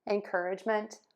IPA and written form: ɛnˈkɜrɪʤmənt (ENCOURAGEMENT)